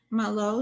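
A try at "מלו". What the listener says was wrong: Malo. I thought I heard a shin on there.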